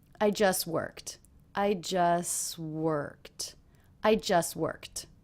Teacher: a tea when the next word also begins with a consonant in these cases often the tea will get dropped